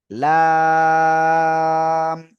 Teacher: উপরে, এই ভিতরে না কিন্তু, এই যে এটা, হুম, এই সামনের এই চারটা বাদে, ঠিক আছে? জিহ্বার আগার কিনারা উপরে মাড়ির দাঁতের গোড়ার সঙ্গে লাগিয়া